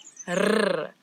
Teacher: This word it doesn't have the ch that we've been talking about, but now we've got a new sound in Afrikaans that a lot of people in different languages struggle with a little bit, and it's the rrr, as if your tongue is jumping up and down in your mouth